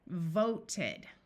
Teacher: The last sound in this word is the T. So when we add the suffix to show that it has already happened, we pronounce it with the short E.